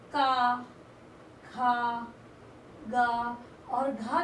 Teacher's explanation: पंजाब में रहने वाला व्यक्ति क, ख, ग और घ को का, खा, गा और घा के रूप में उच्चारित करता है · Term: क्षेत्रीय प्रभाव